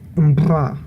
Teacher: which actually has a pre-nasalized voiced bilabial trill, mbra. And this is one of the only bilabial trill that is phonetic and is not an allophone.